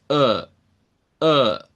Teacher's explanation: Como la lengua tiene que retractarse un poco hacia el fondo en nuestra boca, eso le da como cierta sonoridad a este sonido como de gravedad. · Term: open back A